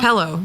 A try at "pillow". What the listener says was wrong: It's like you're pronouncing it Pellow. Pillow. pillow. Pillow. Like a pill. Pillow.